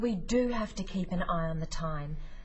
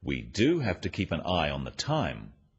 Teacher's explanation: notice the emphasis on the word do